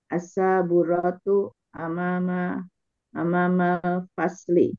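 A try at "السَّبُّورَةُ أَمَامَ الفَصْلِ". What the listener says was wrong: Iya, kena lagi tuh panjang pendek ya. Ternyata ya. Jadi keasikan as-saburatu, as-saburatu.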